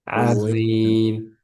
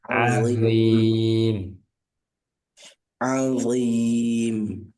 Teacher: A-nya tipis dnya tebal azim